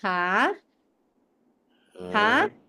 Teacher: Nada 2 itu kayak kamu mau nanya kan, ha? Jadi kayak kamu naik ke atas